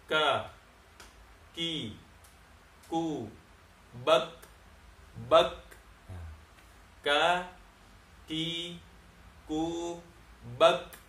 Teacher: dia juga sifatnya tadi hams, nafas ngalir kalau disebut ki. Nah, jadi kalau disebut contohnya ka, ya, ka, ki, ku, bak. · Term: huruf kaf